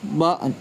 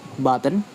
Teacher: Think of it is like this. The vowel in syllables get so lazy and weak that it disappears and the neighboring consonant has to step up to do this job.